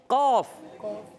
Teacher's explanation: زبان کی جڑ اور تالو کے نرم حصے سے ادا ہوتا ہے